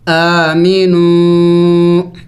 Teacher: حمزہ کڑی زبر آ، میم زیر می، نون واو پیش نو، آمینو، چونکہ کڑی زبر کو بھی ایک الف کے مقدار کھینچنا ہوتا ہے، لمبا کرنا ہوتا ہے۔ آمینو، اس الف کو نہیں پڑھیں گے، اس کے اوپر کوئی حرکت نہیں ہے۔